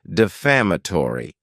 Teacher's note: this word has five syllables with the stress on that second syllable